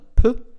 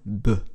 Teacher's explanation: Das stimmlose dentale t wird zum stimmhaften dentalen d Und das stimmlose labiale p wird zum stimmhaften labialen b.